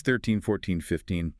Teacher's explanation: In the teens, 13, 14, 15, the stress, the heavy beat of the word falls on the second syllable. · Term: rhythmic stress